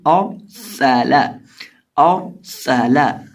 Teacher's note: اب اس لفظ کے اندر ہمارے پاس ہے حمزہ را سین اور لام، اور یہ جو را ہے اس کو ہم پر کر کے پڑھیں گے کیونکہ را ساکن سے پہلے زبر ہے، اور سین کے اندر سٹی کی بات پیدا کر کے پڑھیں گے، اور لام کو سمپل اور سالا اور سالا.